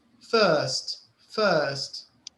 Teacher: But in the second word, first, sometimes in British English they say first, right? Yes. So the R is silent. You cannot hear the R.